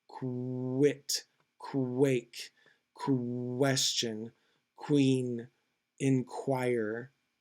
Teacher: it's really comes from a very very closed ooh sound which actually becomes a fricative or a consonant um because of the extreme closedness of the of the formation of the v of the sound. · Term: semi vowel w sound